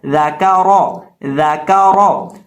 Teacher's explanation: ذال کے اندر سیٹی کی آواز پیدا نہیں ہوتی، زا کے اندر سیٹی کی آواز پیدا ہوتی ہے، اس لیے یہاں ہم ذال کے اندر سیٹی کی آواز نہیں پیدا کریں گے۔